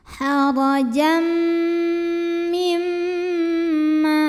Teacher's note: Lalu berikutnya ada idgham bil gunnah karena ada tanwin fathah yang menghadapi huruf mim, maka tanwin fathah yang bunyinya n kalau ketemu mim jadi m, masuk ke mim disertai bunyi dengung, bunyi M-nya tahan.